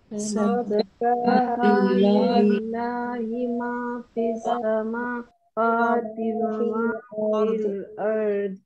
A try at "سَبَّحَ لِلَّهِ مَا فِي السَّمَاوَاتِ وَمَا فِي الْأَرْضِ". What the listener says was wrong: سبح ح کو صحیح کرے، سبح لله.